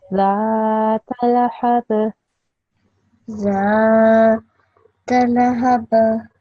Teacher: Just the zal needs to be a bit longer because there's the alif mad after it.